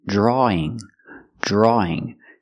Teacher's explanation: do not pronounce a w there's no W sound it's the sound a plus e draw e draw drawing he's